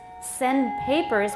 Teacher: send papers, the D often is not audible, but your tongue may be there making the D.